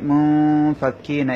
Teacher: এখানে নুন সাকিনের পরে ফা এসেছে, ফা হচ্ছে ইখফার হরফ, তাই নুন সাকিনটা গুন্না করতে হবে।